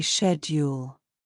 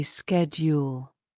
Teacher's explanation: In British English, we say ‘shed-yule.’ But in American English, people say ‘sked-yule.’